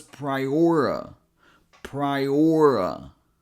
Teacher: it's a schwa sound. So it sounds like a quick uh